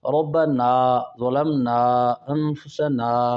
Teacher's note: الف کا مخرج جوف دہن ہے، یعنی منہ کے اندر کا خلا، یہ منہ کے اندر سے ادا ہوتی ہے. جب آپ منہ کے اندر سے ادا کریں گے تو یقیناً پھر یہ ناک سے، یعنی اس کا مخرج خیشوم نہیں بنے گا.